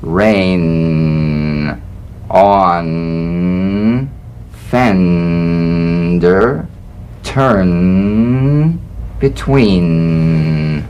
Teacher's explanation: the N is a nasal consonant made with the tongue blade to the upper gum Ridge it's most resonant and it's well forward placed it's a melodic